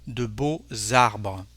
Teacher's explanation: an S or a X at the end of the word becomes a Z. With this example, beautiful trees, here we have a X, and to make our liaison, it's like a Z, de beaux arbres.